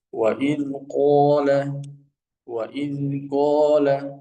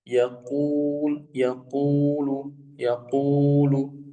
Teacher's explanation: Yang pertama adalah kalau dia fathah maka ketebalannya sempurna. Lalu kalau dia domah ketebalannya ini menurun. Lalu kalau dia kasrah lebih menurun lagi.